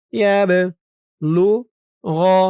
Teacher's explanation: বাটা কলকলার হরফ ধাক্কা দিয়ে পড়তে হবে।